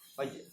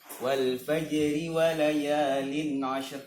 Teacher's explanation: Jadi huruf jim ini huruf termasuk huruf qalqalah gitu. Kemudian dan itu harus mantul. Pantulannya tidak keras seperti yang aslinya fajr, ya kan?